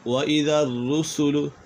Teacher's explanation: را مشدد ہے، اسے جماؤ کے ساتھ پڑھیں گے۔